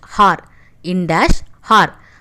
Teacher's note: I am not pronouncing the letter H here. So H here is a silent letter. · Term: silent H